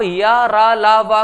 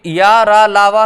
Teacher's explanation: या, रा, ला, वा कहां आते हैं? आपके सघोष में आते हैं, क्योंकि इनमें कंपन होता है